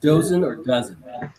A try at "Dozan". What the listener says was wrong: Dozin, Dozan. It's like dozen, but you don't pronounce it that way. With an A. Yeah, Dozan. Yeah, Dozan.